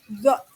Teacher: Hembusan udara yang lewat dengan sempit dan keluar akibat gesekan. Zo tidak bergetar ya pita suara.